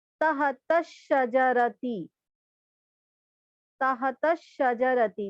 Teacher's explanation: تو یہاں نہ الف پڑھا گیا نہ لام پڑھا گیا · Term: حروف شمسی